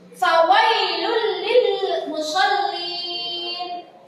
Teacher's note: Jadi jika ada tanwin bertemu dengan huruf lam, huruf idgham bila guna salah satunya, maka harus dibaca dimasukkan tanpa mendengung